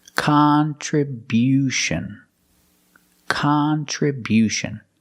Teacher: We change the stress to the first and third syllable.